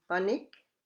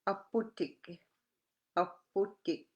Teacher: the P has a sound between English B and P